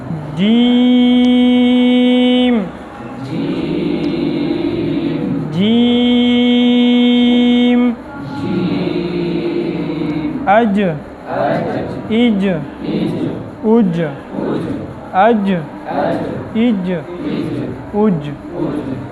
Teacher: جیم یہ زبان کا درمیان والا حصہ ہو، بالمقابل اوپر کا تالو، اس سے جیم نکلتا ہے